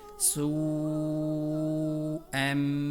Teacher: اگلی مثال سوءم، یہاں واو حرف مد ہے اور اس پر اس کے فوراً بعد حمزہ موجود ہے، لہٰذا اس واو کو سین کی مدد سے لمبا کرنا ہے 3 یا 4 الف کے بقدر